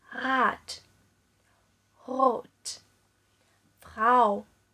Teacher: 这就是我们之前说过的德语中特有的小舌音